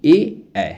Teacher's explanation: ए ऐ, जो है आपके कंठ तालव्य के अंतर्गत आता है